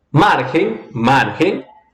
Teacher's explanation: Ela é uma palavra grave porque a pronúncia, a sílaba tônica é a penúltima.